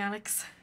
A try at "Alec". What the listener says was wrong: It's Alec, actually. Alex. Alec. It's got a C at the end of it.